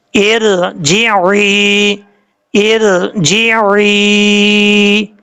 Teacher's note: جیم کے بعد عین ہے، عین کو کلیئر کر کے پڑھنا ہے